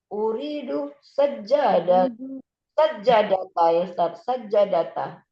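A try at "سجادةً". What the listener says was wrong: Sajadatan tanwin. Sajadatan. Jadi fathah tanwin ya. Boleh disukunkan sekali lagi ya. Boleh dibaca. Kalau dibaca jadi fathah tanwin sebagaimana contoh. Uridu sajadatan.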